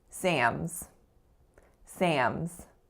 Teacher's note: most speakers will in fact nasalize that ah sound. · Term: nasalized ah sound